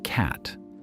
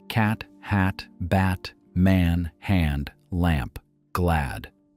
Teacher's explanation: the vowel in the middle, that open, flat, front-of-the-mouth sound that sits between the A in father and the E in bed. Not quite one, not quite the other.